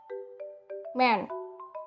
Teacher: Man karena M adalah + voice pita suaranya pastilah bergetar artinya pada saat bunyi m dilepas pita suaranya bergetar bersamaan dengannya